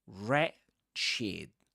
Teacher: When a word begins with wr you say r only.